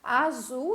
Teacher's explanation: é uma palavra oxítona última sílaba é a sílaba tônica a sílaba mais forte